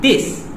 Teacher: the TH fronting of English words would be replaced with the initial consonants such as D